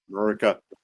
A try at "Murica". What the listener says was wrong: Murica. You also just can't pronounce the A at the beginning. It's Murica.